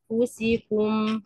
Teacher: تمام انفسكم [موسيقى] حرف الفاء ان انا بهيئ الثنايا العليا اطرحه الثنايا العليا بتكون قريبه من باطن الشفا قريبه منها قريبه منها بعمل غنه الاخفاء عند الفاء ثم بعد ذلك يتم ضغط الضغط على المخرج لضغط المخرج او